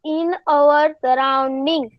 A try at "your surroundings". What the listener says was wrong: In your surroundings, not our, your surroundings.